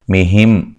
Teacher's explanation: میم ساکن کا اظہار ہے، غنہ نہیں کریں گے۔